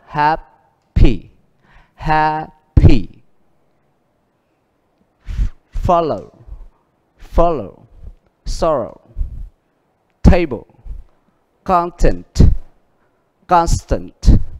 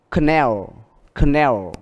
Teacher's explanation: Vậy âm nhấn đa phần được đặt ở âm đầu.